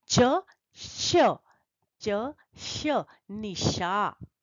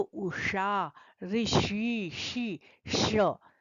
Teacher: तालव्य श में जहां से आप च बोलते हैं वहीं स्पर्श करके जब आप उच्चारण करेंगे तो तालव्य श का सही उच्चारण होगा